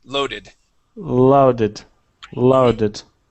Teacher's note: instead of LED it's low o sound